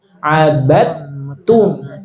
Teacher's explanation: Dalnya hilang, masuk ke ta Ibu. Iya, langsung masuk ke ta. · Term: idgham mutajanisain